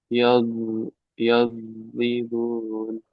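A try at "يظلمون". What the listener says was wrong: Nah, masih yad ya. Yad. Yaw, yaw, yawlimun.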